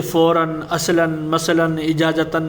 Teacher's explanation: اس میں کیا ہے کہ آواز نون کی نکلے گی. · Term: تنوین